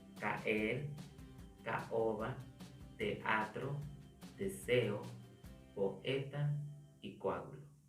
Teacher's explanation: dos vocales juntas, pero estas no se pronuncian como una sola sílaba, sino lo contrario, se pronuncian en sílabas separadas. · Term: hiato